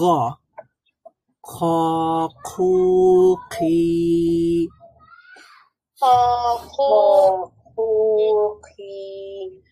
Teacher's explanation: খ এর মাখরাজটা হচ্ছে জিহ্বার হলকের একেবারে শেষ ভাগ থেকে একেবারে নরম যে প্যালেটটা রয়েছে সেখানে এক ধরনের ভাইব্রেশন তৈরি হবে